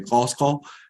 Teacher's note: A língua quechua tem esse som originalmente, Quechua, a cidade de Cusco, não Cusco, sino que Cusco, e tem também uma afetação dos vocais, então a U de Cusco está voltando a O de Cusco, e a I de Quechua está voltando a E de Quechua, quando está depois do consoante uvular